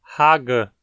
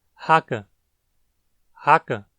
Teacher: Não chegamos a falar Haga, tão vozeado quanto um G, mas Haka, com apenas um leve vozeamento.